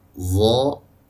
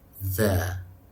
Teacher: zo itu adalah huruf yang dibaca tebal, sementara zal itu adalah huruf yang dibaca tipis